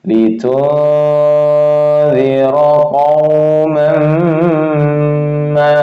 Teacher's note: Zira, litunzira samar 2 harokat, dengung 2 harokat ya. Membaca samar dengan dengung 2 harokat ya. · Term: ikhfa hakiki